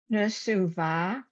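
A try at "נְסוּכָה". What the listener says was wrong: Cha. That's a chaf, right? Nesucha, right? I know it's hard because the bet looks exactly the same, except for it's got that little tail on the right-hand side.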